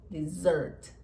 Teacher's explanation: Primeiro que a sílaba tônica é a segunda.